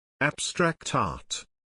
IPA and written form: ˌæb.strækt ˈɑːt (Abstract Art)